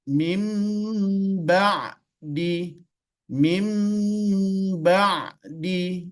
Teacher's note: mati bertemu dengan ba mim mim mim ba'di mim ba'di jadi tidak ada nunnya dan tidak pula dimasukkan tapi dia berubah menjadi huruf mim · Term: iqlab